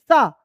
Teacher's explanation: यदि हम मूर्धन्य श की बात कर रहे हैं तो उसका उच्चारण स्थान श होगा। और वहीं पर यदि हम सरौता वाला जो स है उसका उच्चारण कर रहे हैं तो इसका उच्चारण स्थान दंत होगा।